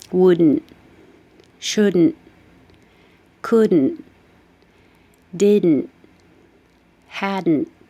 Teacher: you don't say the final t so you just hold it there